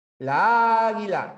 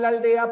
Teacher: Porque la A no lleva fuerza de voz, es aldea.